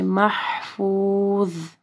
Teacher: جب آپ پڑھیں گے تو آپ کی زبان کی نوک جو ہے اوپر کے 2 دانتوں کے پاس آئے گی اور ضوا کو ہیوی پڑھنا ہے